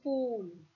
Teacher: During articulation, the back of the tongue is raised in the direction of the soft palate almost to a close position, that is towards the entire soft palate. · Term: Long woo sound